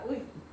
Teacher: 으로 시작해서 이로 끝나. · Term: 이중모음